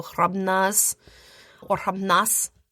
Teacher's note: And the And that's h r a b n a z. The b in there is supposed to just be like a touch of a b, not really like a hard b. · Not really a z, more of an s.